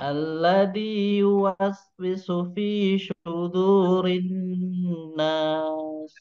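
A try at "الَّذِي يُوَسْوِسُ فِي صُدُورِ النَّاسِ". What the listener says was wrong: Ya, sudah bagus. Cuman nanti silakan dilatih lagi untuk makhraj hurufnya ya.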